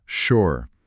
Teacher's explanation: S com som de X e final mudo.